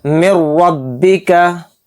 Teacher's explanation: रा को मोटा करके पढ़ेंगे क्योंकि रा के ऊपर ज़बर है · नून साकिन के बाद रा आ रहा है, तो इसमें इदगाम बिला गुन्ना का कायदा हो रहा है और इसमें हम गुन्ना नहीं करेंगे, यानी कि नून को साइलेंट कर देंगे और रा मीम के साथ मिलकर पढ़ा जाएगा।